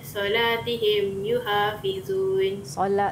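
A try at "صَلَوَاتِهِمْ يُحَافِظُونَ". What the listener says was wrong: Ada baris, okay. Ada baris kat situ. Ha. Okey, solawatihim yuhafizun.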